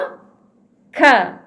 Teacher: huruf K dia berada di pangkal lidah dan menyentuh lelangit yang belakang, lelangit atas yang berada di belakang